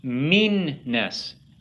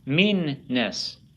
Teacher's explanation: It's like you have 2 of the same consonant together, okay, and you make 2 sounds in the middle of the word. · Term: lengthening a consonant